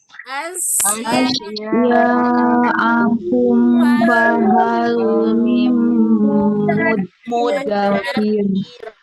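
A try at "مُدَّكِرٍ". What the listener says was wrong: Jangan mudakir tapi muddakir. Nah, kalau ini agak terjeda. Kenapa? Huruf dal itu sifatnya adalah siddah. Ya, siddah. Jadi tidak mengalir, suaranya tertahan. Maka dia seperti kayak terjeda. Muddakir karena tidak ada aliran.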